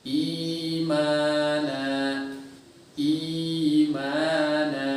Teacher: Si ya di sini sudah berubah menjadi huruf mad dan keluar dari rongga tenggorokan dan rongga mulut yang terbuka gitu. Artinya al-jauf lah, al-jauf.